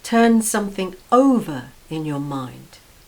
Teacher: notice how the preposition is stressed